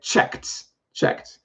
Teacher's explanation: if it ends with k, it actually makes a t sound when you add ed. It doesn't add another syllable.